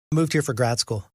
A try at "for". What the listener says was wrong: We have a for reduction. It's not pronounced for, is it? It's fur. Fur.